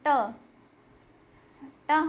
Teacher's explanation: ट हमारा मूर्धा को स्पर्श कर रहा है